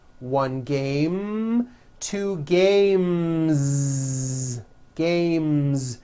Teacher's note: The last sound you hear in the word game is the M sound, which is a voiced consonant. So because of that, when you add an S, the S should also be voiced.